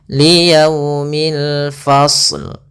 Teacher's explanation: Kemudian pada lafal yaumil di sini ada alif lam qamariyah, yaitu alif lam yang kita tulis dan kita baca dengan jelas suara lamnya